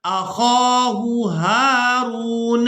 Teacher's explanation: दो हा एक ही जगह पर जमा हो गई हैं, दोनों को साफ और वाज़े करके अदा करेंगे